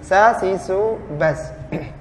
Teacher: Adapun sin dia tipis dan sin termasuk huruf hamz.